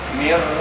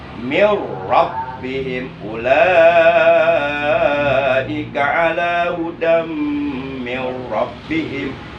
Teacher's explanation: Jadi nun matinya idghamkan, masukkan ke dalam huruf ro. Jadi nun matinya hilang karena dimasukkan ke dalam huruf tapi jangan ditahan, jangan didengungkan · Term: idgham bila guna